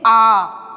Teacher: विवृत स्वर। क्योंकि जब हम आ बोलते हैं तो हमारा मुख द्वार कैसा है? पूरा खुला हुआ है